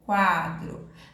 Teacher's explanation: A letra U saiu com o som mais fraco, ele é chamado de semivogal, e a letra A que saiu mais forte é chamado de vogal, tá?